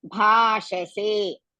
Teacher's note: Bha is dirgha and Mahaprana. Sha, Shanmukha Sha, and se, Saraswati Sa, and dirgha.